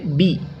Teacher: زیر کو معروف پڑھا جائے اور مجہول آواز سے بچا جائے۔ زیر کی آواز نیچے کو جاتی ہے۔